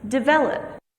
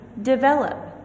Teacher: the stress marker is on the second syllable in this word